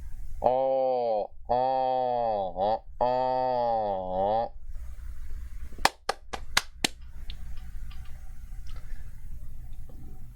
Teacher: This is the nasal back mid-open rounded vowel.